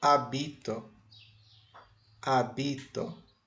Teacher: veja que agora a sílaba tônica está no bi.